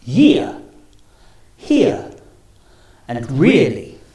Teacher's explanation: your mouth should open a little bit starting on the E and then finishing on the uh